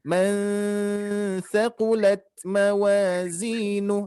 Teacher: harus ditahan ya karena nun mati bertemu tha itu huruf ikhfa